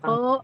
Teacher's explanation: Kho berarti pangkal lidah naik naik, isti'la kho dan bunyi o-nya itu muncul dari apa karena pangkal lidah naik sehingga dia jadi bulat. Kho tuh kehalang dengan pangkal lidah yang naik jadi bunyinya jadi bulat jadi o.